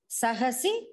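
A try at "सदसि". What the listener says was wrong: Okay, one sadasi, not sahasi. Sadasi.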